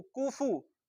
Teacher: اس کے بعد کاف فا دونوں پر پیش ہے، دونوں کو ہونٹ گول کر کے پڑھیں گے اور کھینچ کر نہیں پڑھیں گے. کاف پیش کو، فا پیش فو، کوفو.